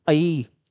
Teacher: ये हमारी जो ध्वनि होती है ये होती है कंठ तालव्य ध्वनि